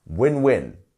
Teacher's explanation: here we have the stress on both words because there are two words